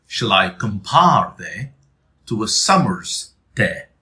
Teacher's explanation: the R is in both compare and summer. And the R is pronounced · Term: rhotic